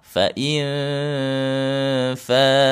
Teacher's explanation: ditempelkan gigi seri atasnya ke bibir bawah.